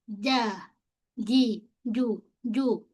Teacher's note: pastikan pada jim jangan berangin, jangan sebut cuu cu tak nak jim. Kita fokus bahagian tengah lidah kita.